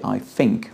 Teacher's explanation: a Londoner might say I think with a f sound.